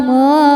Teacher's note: Ro-nya dibaca secara tafkhim karena harokatnya fathah, maka ro-nya tebal. Ro di sini juga ada hukum mad, madnya mad tabi'i zahiri karena ada alif didahului fathah, maka bacanya panjang 2 harokat.